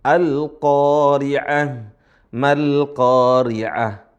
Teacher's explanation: kalau ada ta marbutoh dirubahlah menjadi ha